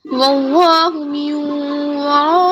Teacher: یہاں پر واو کو نبر کے ساتھ پڑھیں گے یعنی لٹل لاؤڈر کر کے